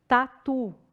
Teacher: eu tenho um pouquinho da língua encostando lá na frente